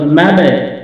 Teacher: কলকলা মাবে নিচের দিকে উচ্চারণ হচ্ছে, সাউন্ডটা নিচের দিকে।